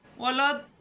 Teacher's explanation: চার আলিফ টেনে এসে লামকে ধরবে